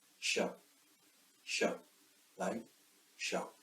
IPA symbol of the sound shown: ʃ